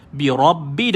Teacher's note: ada sabdu pada ba tahan dan lepaskan